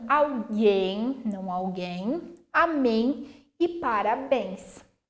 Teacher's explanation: ainda que tenha um acento agudo, o timbre vai ser fechado, tá? Não fica em, fica em. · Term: timbre fechado